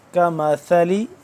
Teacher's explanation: کریں گے، کمثلی یہ سا ہے، نرمی سے پڑھا جاتا ہے، زبان کی نوک کو دونوں دندوں کے درمیان میں سے ذرا بر کی جانب نکالیں گے تو سا اور زا دونوں ایک ہی طرح سے ادا ہوتے